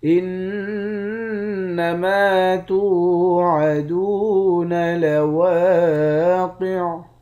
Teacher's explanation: انما توعدون لواقع، نون مشدد پر غنہ کریں گے، میم کے بعد الف ہے، الف حروف مدہ ہے، ایک الف کی مقدار کھینچیں گے · قاف کو موٹا پڑھیں گے، آخر میں عین ساکن ہے